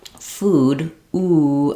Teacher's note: So if I'm doing a word like food, ooh, I'm really pursing my lips and I have that clear tense ooh sound